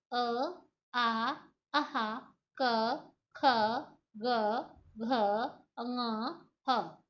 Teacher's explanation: इसमें जीवा की जो अगली नोक है वो कहीं पे भी नहीं स्पर्श कर रही, तो ये आवाजें गले से आ रही हैं, इसलिए ये कंठी व्यंजन है। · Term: कंठ्य व्यंजन